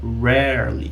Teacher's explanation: Eu tenho aqui o R retroflexo do inglês.